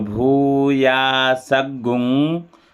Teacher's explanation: दीर्घ गुंग है इस गुंग का उच्चारण देर तक किया जाता जो हरस गुंग होता है उसका जल्दी होता है इसका देर